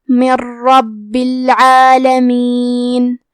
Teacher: کلمت من کے آخری میں نون ساکن ہے، پھر حرف الرا ہے کلمت ربی، را حروف الادغام بغیر غنہ میں سے ہے، تو ہم یہ حکم کو بغیر غنہ سے لیکن تشدید کے ساتھ ادا کریں گے